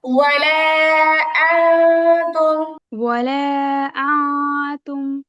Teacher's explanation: এই গুণাটা পাতলা হবে উপরের দিকে যাবে না নিচের দিকে থাকবে